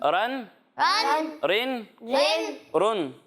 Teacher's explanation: तनवीन की अदायगी करते वक्त नून साकिन की आवाज़ आएगी